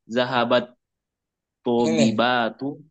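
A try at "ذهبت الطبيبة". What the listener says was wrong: Ini sambung. Sambung taknya. Sambung taknya. Zahabatit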